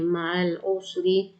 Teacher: را کو باریک کریں گے را کے نیچے زیر ہے